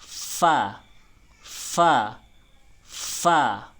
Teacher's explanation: ketika fa itu bibir bawah dan gigi atas bertemu